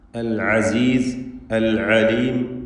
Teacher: തൊണ്ടയുടെ മധ്യമാണ് ഐനിൻ്റെ മഖ്റജ്. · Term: ഐനിൻ്റെ ഉച്ചാരണം